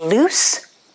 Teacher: loose is with an s sound your tongue is also touching behind the front teeth but as you make the sound it also touches the teeth on the sides and the air doesn't vibrate